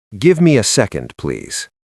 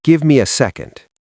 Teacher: >> Notice the intonation. It goes down at the end. It's a statement, not a question. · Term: Lowering pitch